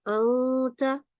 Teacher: the ta is a letter of ikhfa, and it has a nun sakin before it. Then we say anta, we make a nasal sound. Okay, so this is one example for this.